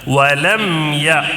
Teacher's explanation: ایک تو میم ساکن کے بعد یا آیا ہے تو میم ساکن کا اظہار، یعنی جلدی پڑھنا ہے، یہاں غنہ وغیرہ نہیں کرنا ہے